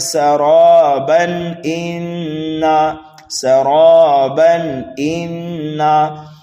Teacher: تنوین کے بعد حمزہ آ رہا ہے حروف حلقی میں سے، اس لیے یہاں پر ہم اظہار کریں گے